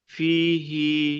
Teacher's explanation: ফিটা টান হবে, হিটা টান হবে না।